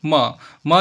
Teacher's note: म जो है सघोष है, यानी कि घोष है। इसको बोलने से गले में कंपन उत्पन्न होता है।